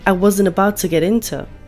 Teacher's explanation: did you hear the flap T sound at the end of get, which sounds like get, so the T sound is not completely pronounced.